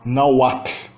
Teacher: O H em si é mudo. O H está só aí para indicar que o U que o segue é uma semivogal. · Não tem o som de H aí na garganta. Não tem o som glotal do H não existe. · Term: som que equivale ao W